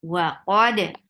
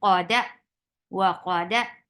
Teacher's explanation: There is qalqala, but we are not moving our jaws